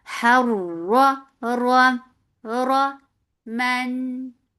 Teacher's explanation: From your throat to fatha upon jaws, attach it to ra. Ra will get sifa of the wasut, and ra will be heavy because there is fatha on it.